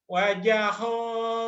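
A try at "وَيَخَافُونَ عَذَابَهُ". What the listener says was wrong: Bukan wajah ya. Wayaho. Titiknya di atas. Ho. Wayaho.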